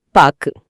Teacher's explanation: பாக்குன்னு சொல்லி முடிக்கும் போது அந்த கூ முழுமையா ஒலிக்காம காத்துல அப்படியே பாதியிலயே கரைஞ்சிறத